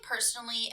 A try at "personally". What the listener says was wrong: No, you said it wrong. Personally, you said like personably or something like You butchered it a little bit.